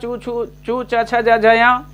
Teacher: इनका उच्चारण स्थान भी तालु तालव्य ये भी कहे जाएंगे, इनका उच्चारण स्थान तालु है